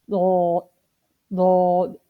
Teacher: Hafa lisan means the side of the tongue, as the side of the tongue is thicker than the front of the tongue. So the side of a tongue which is in front of a molar is called hafa, and the letter pronounced from it is called hafa lisan. This is only one in number, and this is the letter dod. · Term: hafia letter